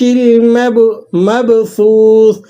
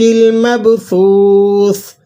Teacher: ایک سا اور آخر میں سا جو ہے ساکن ہے، ایک سا کے بعد واو ہے تو آپ نے اس کو ایک الف تک لمبا بھی کر لینا ہے اور دوسری سا کو ساکن کر کے پڑھنا ہے۔